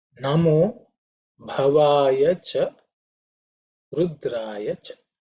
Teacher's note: the Bha, which is the fourth letter, an aspirated letter. Otherwise, none of the other letters are aspirated. So the Bha has to be stated or said with a little bit of emphasis.